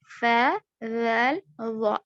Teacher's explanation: تو ثا جو ہے زبان کی نوک دانتوں کے کناروں کو, سامنے کے جو دانت ہیں اس کے کناروں کو لگنے سے ادا ہوتے ہیں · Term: حروف لثویہ